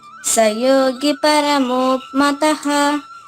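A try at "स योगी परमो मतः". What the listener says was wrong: ఇక్కడ సయోగి గురుదీర్ఘం చూడైనా సయోగి పరమో మతః.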